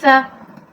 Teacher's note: اس میں سیٹی کی آواز نہیں آنی چاہیے، ثا کو آپ نے نرمی سے ادا کرنا ہے